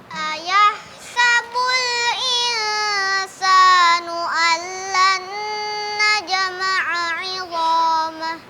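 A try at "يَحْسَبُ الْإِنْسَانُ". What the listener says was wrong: Lidahnya jangan terlalu dekat ke gigi. Ketika mendekat gigi, itu jangan terlalu nempel. Jadi lidah itu ngegantung.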